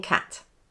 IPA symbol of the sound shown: æ